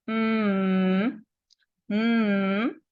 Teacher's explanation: you're going as you as you make the sound m m you can feel the vocal cords moving right okay can you feel that that vibration is called voiced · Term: voiced consonant